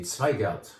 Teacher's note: So Zweigelt starts with a Z, but it's most correctly pronounced if you kind of make a T sound before the Z.